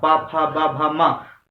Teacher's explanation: यानी जब हम पढ़ते हैं प वर्ग तो हमारा ओठ स्पर्श करता है। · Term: ओष्ठ